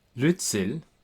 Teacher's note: C makes another sound as in German z. So, it makes a ts sound, that ts sound.